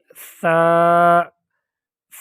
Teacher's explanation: اور سا کو ادا کرتے وقت ہم اس کے تلفظ کا طریقہ یہ ہے، اس کی ادائیگی کا طریقہ یہ ہے کہ ہم زبان کے سرے کو یعنی زبان کی نوک کو سامنے والے دو دانتوں کے سرے سے لگائیں گے تو سا ادا ہوگا نرمی کے ساتھ